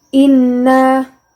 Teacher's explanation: Inna gunnah, sebab nun bertasydid. Dibaca dengan dengung serta ditahan 3 harokat.